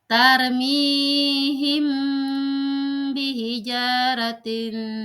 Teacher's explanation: syafawi yaitu jika ada mim sukun bertemu dengan huruf ba yaitu cara membacanya dengan suara samar antara mim dan ba pada bibir · Tarmihim bihijaratin. Nah, di situ ada mim mati bertemu dengan ba dan dibaca samar